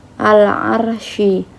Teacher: ro tafhim karena fathah bertemu dengan ro sukun